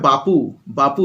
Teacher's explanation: ব যেটা ছিল ঘোষধ্বনি হয়ে গেল প অঘোস ধ্বনি হয়ে গেল অর্থাৎ অঘোষ ধ্বনির দিকে চলে গেল তখন সেটা হচ্ছে অঘোষী ভবন।